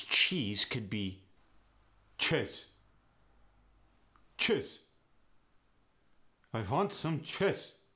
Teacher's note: the e sound gets a sound kind of between the a and the short I sound